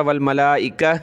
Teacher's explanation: यहाँ मैंने पढ़ा वल मलाइका, इसलिए कि गोल ता पर जब वक़फ़ करते हैं तो वो हा बन जाती है